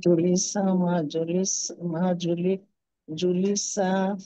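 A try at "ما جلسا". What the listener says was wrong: জু, জুতে টান হবে না, জুলিসা, জুলিসা তো জুতে ওয়াও আছে না।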